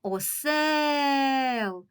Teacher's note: ми проспівуємо голосний е який належить до другого складу отже наголошеним є другий склад